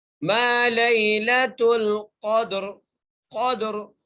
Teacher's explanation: ہم وقف کے سمے اس را کو موٹا کر کے پڑھیں گے